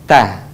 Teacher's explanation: Atau sederhananya ujung lidah disentuhkan dengan gusi-gusi seri atas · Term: huruf ta